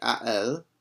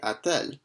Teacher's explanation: we add in a T between a and elle, and the reason why we do that is just because it makes it easier to pronounce it. It's much more challenging to say a elle than it is to say a-t-elle.